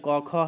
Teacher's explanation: क और ख जो है इसका जो उच्चारण स्थान है वो कंठ है